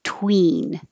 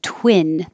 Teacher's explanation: The tongue is very high for the E.